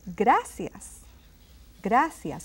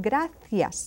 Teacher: that c can be pronounced as a th sound